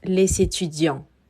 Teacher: estaremos omitiendo al final la S y decimos les étudiants.